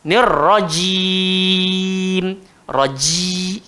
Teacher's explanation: Sebab huruf jim bukan keluar kat bibir. Huruf jim keluar dekat tengah lidah, langgar le langit atas.